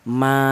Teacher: Panjangnya 5 harokat atau 5 ketukan ya. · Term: mad wajib muttasil